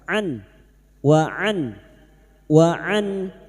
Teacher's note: huruf ain wastul halqi makhrajnya ada pada tengah tenggorokan an wa an wa an nun sukun bertemu Hamzah idhar halq nun sukun dibaca jelas tanpa mendengung.